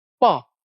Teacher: दोनों ओठ आपस में चिपक जाएंगे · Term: ओष्ठव्य